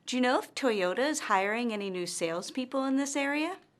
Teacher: notice that our intonation rises at the end of this yes or no question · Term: rising intonation